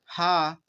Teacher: काकल वर्ण हमारे हा होंगे